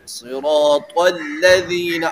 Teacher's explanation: اب لام صراط کی وجہ سے لام نہیں موٹا ہونا چاہیے